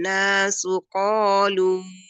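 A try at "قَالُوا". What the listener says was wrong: Ayo qafnya coba lagi sekali lagi ditebalkan.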